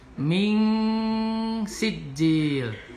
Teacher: Kemudian ming sijil ikhfa, nun mati menghadapi huruf sin, dibaca ikhfa atau samar, suara n diganti dengan eng samar